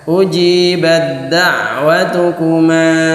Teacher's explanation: Bukan ujibat da'watu, tapi ujibat langsung masuk ke dal.